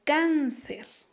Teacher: ¿Verdad que la mayor fuerza de voz recae en la primera sílaba? Y tiene la rayita a la vocal. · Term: acento ortográfico